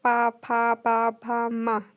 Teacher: तो देखिए दोनों लिप्स आपस में टच हो रहे हैं ना, तो ओष्ठ हो गया, मतलब ओष्ठ होंठ आपके टच हो रहे हैं, ठीक।